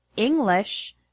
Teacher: the word English has the stress on the first syllable, ing. The word improve has the stress on the second syllable, prove.